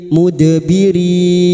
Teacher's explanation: Huruf dal yang mati asli di tengah kalimat qalqalah sugro